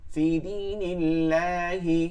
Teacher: আল্লাহ শব্দের ডানে জের আছে আল্লাহ শব্দকে লা করে পড়তে হবে মানে চিকন করে পড়তে হবে